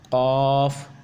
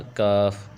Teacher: جو موٹا قاف ہے اس کو زبان کی جڑ اور تالو کے نرم حصے سے ادا کریں گے، اور باریک کاف کو زبان کی جڑ اور تالو کے سخت حصے سے ادا کیا جائے گا